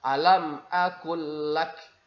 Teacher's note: langsung dimasukkan huruf lam atau suara huruf lam pertama ke dalam huruf lam yang kedua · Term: idgham mutamatsilain shaghir